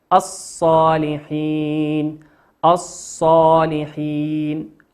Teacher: لام ساكنة أتى بعدها حرف الصاد، والصاد من حروف اللام الشمسية ندغمها الصالحين، لا ننطق اللام نقول الصالحين.